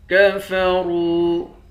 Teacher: را کو موٹا پڑھیں گے، واو کے ساتھ ملا کر ایک الف کے مقدار کھینچیں گے